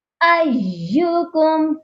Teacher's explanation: یا مشدد ہے، اس کو سختی سے پڑھا جائے گا، ایکم نہیں پڑھنا۔